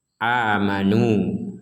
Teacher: dhammah bertemu dengan waw, ya cukuplah di situ dua harokat tanpa menambahi dengan adanya alif ini. Artinya di sini alif yang ada tanda lingkaran seperti ini itu tidak dibaca, ini la yuntaku bihi fil wasli, jadi wala fil waqfi, jadi tidak dibaca, jadi dianggap tidak ada gitu.